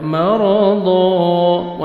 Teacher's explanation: मरदा, रॉ को मुज़बर, रॉ को मोटा करके पढ़ेंगे, जब स्टॉप करेंगे अलिफ मद्दा हो जाएगा, दौ ज़बर अलिफ हो जाएगा। मरदा, 1 सेकंड दौद को खींचना है और दौद को मोटा करके पढ़ना है।